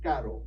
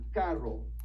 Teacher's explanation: Now, when you look at the double R, this makes more of that Spanish sound that you've probably heard, the trill sound. So it's going to be kind of a r sound.